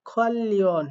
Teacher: এই নিউন বাচ্চিমের পরে রিউল থাকার কারণে দুইটার উচ্চারণ মিলে লয়ে লয়ে হয়েছে। শুধু এমনটাই না, নিচে রিউল উপরে নিউন, সেক্ষেত্রেও লয়ে লয়ে হয়, আবার নিচে রিউল উপরেও রিউল, সেক্ষেত্রেও লয়ে লয়ে হয়।